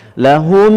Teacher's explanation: mim mati berjumpa mim, idgham mithlain juga sama atau idgham mimi juga sama, ditahan 2 harakat dengan dengung di dalam khayshum